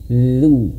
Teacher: Kemudian zu. Huruf dzal itu ujung lidah menyentuh ujung gigi seri atas.